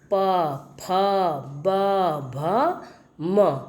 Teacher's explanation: ये 5 वर्ण ओष्ठ ध्वनियाँ होती हैं। इनके उच्चारण में ओठ आपस में मिलते हैं।